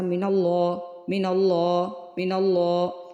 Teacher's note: نون کو نہیں نہ کھینچا، نون کو لام سے ملا دیا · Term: غنہ آنی